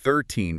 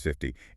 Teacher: Teen numbers are stressed at the end. TY numbers are stressed at the beginning. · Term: where the stress is